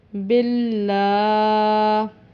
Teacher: یہاں پر ہم نے اس کو موٹا یا پر نہیں کیا لام کو، اللہ کے لام کو، کیونکہ پچھلے حرف با کے نیچے زیر تھی۔